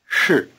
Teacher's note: The vowel in 是 is just a prolonged R sound, 日. Try repeating am again. 是 To make this R sound, you have to curl the tip of your tongue back. · 是 To make this R sound, you have to curl the tip of your tongue back. The SH part of 是 is also pronounced with the tip of the tongue curled back